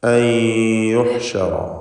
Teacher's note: ഇദ്ഗാം ബിഗുന്ന നാഖിസാണ്, ഭാഗികമായി ലയിപ്പിക്കുക. അൻ യുഹ്ശറ, റാഇന് തഫ്ഖീം കൊടുക്കുക, തടിപ്പിച്ച് റാഇനെ ഉച്ചരിക്കണം. യുഹ്ശറ എന്ന് വ്യക്തമാക്കുക. · വഅൻ എന്നതിലെ സാക്കിനത്തായ നൂനിനെ ശേഷമുള്ള യാഇൽ ലയിപ്പിച്ച് മണിക്കണം. ഇദ്ഗാം ബിഗുന്ന നാഖിസാണ്, ഭാഗികമായി ലയിപ്പിക്കുക.